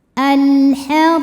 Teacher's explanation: alif lam menghadapi huruf qamariah yaitu ha. Maka lam sukun dibunyikan dengan jelas. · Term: alif lam qamariah